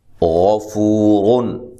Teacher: غفو، را دو پیش رن، غفورن۔ اب یہاں را اور یہ غین، یہ دو، ان کو ہم نے موٹا کر کے پڑھنا ہے۔ یہ تو موٹا حرف ہے، یہ کبھی بھی باریک نہیں ہوتا۔